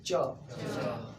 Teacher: हमारी जीभ सबसे ऊपर तालु में स्पर्श कर रहा है।